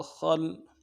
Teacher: خا لام زبر خل، خا کو موٹا کرنا ہے، لام سے ملانا ہے، خا لام زبر خل، خل۔